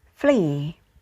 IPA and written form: friː (free)